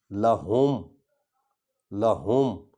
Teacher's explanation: ہے کو ہم سینے سے نکالیں گے تاکہ جو ہے وہ اس کا مخرج یہی ہے۔